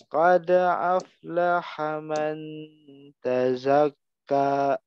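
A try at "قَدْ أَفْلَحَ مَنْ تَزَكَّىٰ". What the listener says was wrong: Man tazakka. Ikhfakan lagi, lebih agak lama.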